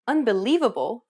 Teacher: do you notice how the li is accentuated? That's because it's pronounced longer and louder than any other syllable in the word, and this is what we refer to as stress.